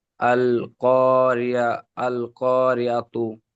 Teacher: রয়ের নিচে জের আছে, তাই রকে বারিক করে পড়তে হবে।